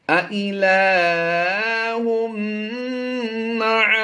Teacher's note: تنوین کے بعد حروف یرملون میں سے میم آ گیا تو یہاں پر ہم نے ادغام مع الغنہ کرتے ہوئے غنہ آنے کی آواز دینی ہے.